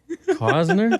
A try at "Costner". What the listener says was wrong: Isn't there a T in there somewhere?